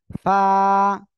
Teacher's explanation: নিচে ঠোঁটের পেট সামনের উপরে দুই দাঁতের আগার সঙ্গে লাগাবেন, লাগিয়ে উচ্চারণ করতে হবে।